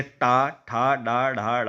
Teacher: जीभ मोड़ के हमारे ऊपरी छत को टच कर रही है, जैसे टा ठा डा ढा डा आप पढ़ रहे होंगे, तो जो हमारी जीभ मुड़ के ऊपरी मुंह के ऊपरी छत को टच होती है। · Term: मूर्धा